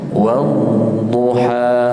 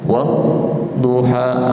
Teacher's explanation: Istitalah bukan saktah, dia memanjang.